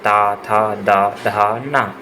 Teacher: त वर्ग। त, थ, द, धा, न ये दांतों का स्पर्श करते हैं।